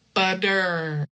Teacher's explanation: we're not touching the tongue to anything with the R